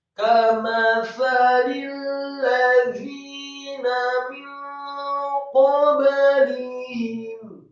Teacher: Kamathali, kafnya dibaca tipis, fathah satu harokat, kemudian mimnya dibaca tipis, fathah satu harokat, kemudian tha-nya dibaca tipis, lidahnya agak keluar sedikit, tarqiq, fathah satu harokat. Kemudian lamnya dibaca tipis, kasroh satu harokat. · Setelah lam yang kasroh satu harokat, langsung disambung kepada huruf lam yang tasydid pada kata alladzina. Lamnya tasydid ditekankan, kemudian fathah satu harokat